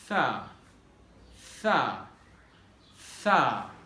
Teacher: Your tip of the tongue will be almost touching to upper teeth.